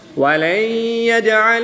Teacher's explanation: نون ساکن کے بعد یا حروف یرملون میں سے ہے، تو یہاں پر ادغام مع الغنہ ہوگا، غنہ کر کے پڑھیں گے